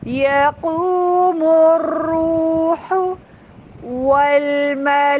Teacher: واؤ آپ کے ہونٹ پراپر گول ہوں، ہونٹوں کا دائرہ جتنا تنگ ہوگا وہ اتنا پراپر ادا ہوگا.